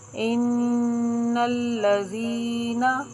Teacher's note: ذال یہاں پر حروف مدہ ہے، اس کو ایک الف کے برابر کھینچ کر پڑھیں گے، ٹھیک ہے۔ جس حرف کے نیچے زیر ہو اور اس کے بعد یا ساکن آ جائے تو یہ حروف مدہ ہوتا ہے، اس کو تھوڑا سا 2 حرکت یعنی ایک الف کے برابر کھینچ کر پڑھتے ہیں۔